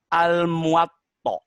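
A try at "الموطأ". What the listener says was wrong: Nggak pakai ain, pakai hamzah ujungnya.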